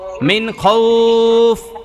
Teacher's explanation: মিনের মধ্যে নুন সাকিনের ইজহার কারণ নুন সাকিনের পরে খ আইসা গেছে